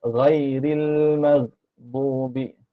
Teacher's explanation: Ghin tu pakai tekak belakang ni, tak pakai lidah. Ghin tak pakai lidah.